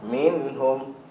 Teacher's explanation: so dengung ada tapi dia naqis naqis ni maksudnya bawah daripada dua harakat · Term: dengung naqis